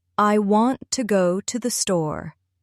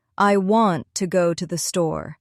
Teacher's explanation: Notice how I stress want and store. Stressing the key words makes your speech sound clearer and more natural.